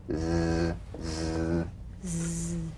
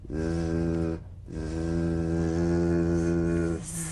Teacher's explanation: The Z vibrates in that very small open space between the tongue and the upper teeth.